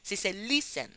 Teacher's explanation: la última no está acentuada. ¿Por qué? Porque la primera es la tónica y la última es átona. O sea, no tiene el sonido más fuerte. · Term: sílaba tónica